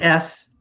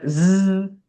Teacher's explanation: s is not voiced. That's an S, but z, same thing, same play. The only difference is it's voiced.